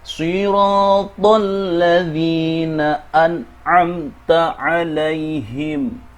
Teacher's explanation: ya sukun yang didahului oleh kasrah, juga dibaca untuk dua harakat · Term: mad